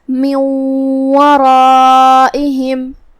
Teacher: کلمت ورائہم میں یہاں حرف الراء ہے اور اس پہ زبر ہے، تو یہاں را کا حکم ہے تفخیم، ہمیں اسے بھاری آواز میں ادا کرنا ہے، جو کہ اس کے بعد مد الف ہے۔